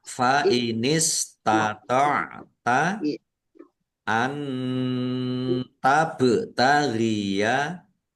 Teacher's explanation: Nun sukun bertemu dengan huruf ta, bacaan ikhfa, dibaca samar-samar.